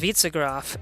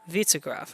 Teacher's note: it's pronounced Witzegraf, stress on the first syllable